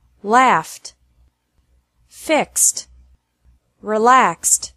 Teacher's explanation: Eed D is pronounced like T after verbs ending with an F or an X sound